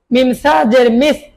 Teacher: জিহ্বার আগা বের করে দিন